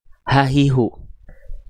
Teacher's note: H besar itu dilafalkan di pangkal tenggorokan atau tenggorokan paling bawah, paling dalam.